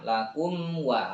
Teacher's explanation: Oke, kum wa ini izhar. Nggak boleh ditahan karena mim ketemu wawu ya, selain mim dan ba. Maka bacanya nggak usah ditahan, lakum wa, langsung aja, nggak usah lakum wa al-kohar, jangan ya, dibaca jelas nanti ya pas praktek.